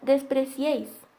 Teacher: posee tres vocales en una misma sílaba una cerrada una abierta y otra cerrada ahora podemos ver que es una palabra aguda porque la sílaba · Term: triptongo